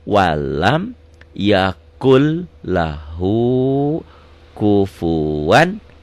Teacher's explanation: walam yakun jadi yakul, ini idgom, melebur